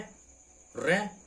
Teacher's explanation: र का उच्चारण प्रकंपित या लुंठित व्यंजन है